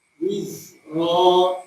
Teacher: Zai itu mengalir, dia rokhawah, suaranya terlepas.